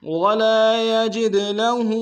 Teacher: سوءا يجز به ولا يجد له، ولا میں لام کے سالف مدہ ایک امتحان میں کھینچیں گے، یجد میں دال میں حروف قلقلہ کریں گے